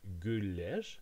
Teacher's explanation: So for example, in gulleg, roses, gul, the U is a plus front sound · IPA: [gyller]